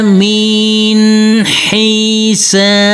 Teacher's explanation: Untuk huruf nun kita baca dengan terang atau jelas, karena ini huruf nun yang bersukun bertemu huruf ha